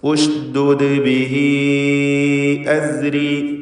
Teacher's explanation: സാക്കിനത്തായ രണ്ടാമത്തെ ദാലിന് ഖൽഖല സുഗ്റ നൽകി ശബ്ദം ചലിപ്പിക്കുക.